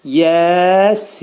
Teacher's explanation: Axırdakı nun hərfini izhar edirik və burunda deyirik. · Yə hərfi 2 səs qədər qaldırılır. Sin hərfi isə 4 əlif miqdarında qaldırılır.